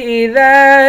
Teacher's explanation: ذال کو ایک الف کے مقدار کھینچ کر پڑھیں گے ، الف حروف مدہ ہے، اذا یسر آخر میں را ہے،